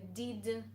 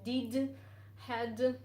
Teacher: I replaced the voiced consonant with a voiceless, like it's done in Russian.